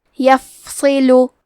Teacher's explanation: حرف الصاد حروف التفخیم میں سے ہے تو ہم یہ حرف کو بھاری آواز میں پڑھیں گے